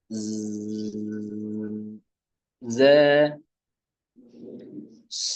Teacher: জিহ্বার অগ্রভাগ রাখবেন নিচের দু দাঁতের পেট অগ্রভাগের দিকে অগ্রভাগ থেকে একটু উপরে জিহ্বার এটি উপরে দু দাঁতের গোড়া সংলগ্ন